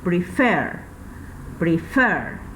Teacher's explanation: tiene la mayor fuerza de voz en la última sílaba